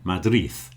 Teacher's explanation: And of course the D at the end. When you have a D in Spanish, when it's at the end, you often say something like like in Madrid, you do that th thing at the end.